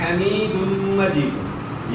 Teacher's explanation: یا ساکن سے پہلے زیر یا ہوتا ہے، جس میں آپ نے مد کرنا ہے ایک الف کی مقدار کے برابر